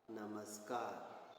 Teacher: नमः धनकार, यहाँ पर विसर्ग सा में बदला है।